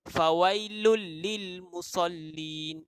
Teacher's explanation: Ada tak huruf yang kita tekankan atau kita gandakan bunyi dia? Ada, iaitu lam dan lam. Dua lam. Kita tekan, kita gandakan bunyi dia.